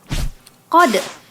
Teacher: Qad itu qalqalah sughra karena ada dal yang bersukun, jadi bacanya pantulkan gitu.